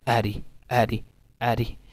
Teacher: if you do not pronounce h at the beginning so actually you might be pronouncing a glottal stop instead of saying harry potter harry you say harry harry arry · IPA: [?]